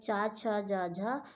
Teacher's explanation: चा वर्ग तालव्य से बोला जाता है